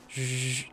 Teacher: So you make the sh sound and add your voice.